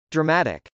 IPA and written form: drəmˈætɪk (dramatic)